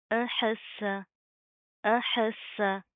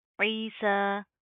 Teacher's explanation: سین کے اندر سٹی پائی جاتی ہے